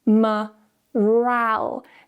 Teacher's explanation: Now we have the weak syllable at the start, so we're going to use a schwa, morale. Now the second syllable here is stressed.